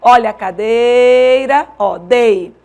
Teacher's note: na palavra cadeira a sílaba tônica é Day Olha a cadeira ó Day certo nesse caso é uma paroxítona